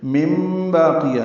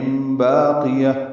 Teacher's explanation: مم باقیہ، نون کی جگہ میم پڑھیں گے، یہ اقلاب ہے یا ابدال ہے. مم باقیہ، نون ساکن کے بعد با آنے کی وجہ سے اقلاب ہوا ہے